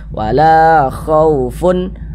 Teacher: Sehingganya la dibaca panjang. Mad thobi'i. Panjang dua harakat.